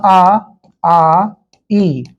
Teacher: हवा मेरी केवल मुंह से पास हो रही है, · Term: मौखिक या निरनुनासिक स्वर